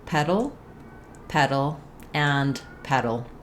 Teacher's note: the letters T and D if they're followed by an unstressed syllable are pronounced as a flap sound · these are what are called a syllabic l where that l sound functions as a syllable so there's really either no vowel in front of it or